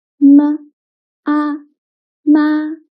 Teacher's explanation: M is the initial. A is the final and this is a first tone.